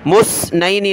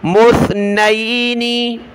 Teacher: یہاں سا پر زبان نکالنی، اس کی جگہ آپ نے سین نہیں پڑھنا